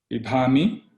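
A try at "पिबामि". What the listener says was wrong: Ante pibami, normal ba.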